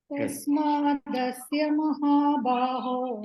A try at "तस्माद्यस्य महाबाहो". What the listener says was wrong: It is not dasya, dyasya. Tasmadyasya mahabaho.